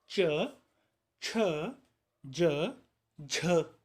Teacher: जिह्वा यानी हमारी जीभ होती है वो मुख विवर के किसी भाग को स्पर्श भी करती है और जो फेफड़ों से आने वाली वायु है वो संघर्ष करते हुए भी बाहर आती है। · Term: स्पर्श संघर्षी व्यंजन वर्ण